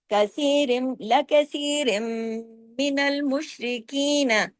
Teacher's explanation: را دو رن کی تنوین ختم ہو گئی، میم پہ تشدید آ گئی، بڑا غنہ ہوا